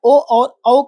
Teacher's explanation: ओ और औ का उच्चारण स्थान कंठ और ओष्ठ।